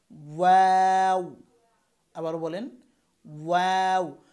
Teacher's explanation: তারপর হচ্ছে ওয়াও, এটাও দুই ঠোঁট থেকে, কিন্তু এটার উচ্চারণের ভঙ্গিমা হবে ঠোঁট প্রথমে গোল থাকবে, তারপরে মিলবে, তারপরে আবার জায়গায় চলে আসবে।